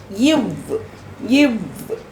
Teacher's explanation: மேல்வாய் பல்லை கீழ் உதடு பொருந்துதல் இந்த கீழ் உதடு போய் மேல்வாய் பல்லை போய் பொருந்துச்சுன்னா இவ் அப்படிங்கிற வார்த்தை